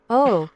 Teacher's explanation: a pure round sound without the w sound at the end